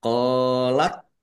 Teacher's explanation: Allahnya dibaca tebal karena harakat di depannya dommah. Lam fathah berdiri mad thobi'i panjang dua harakat.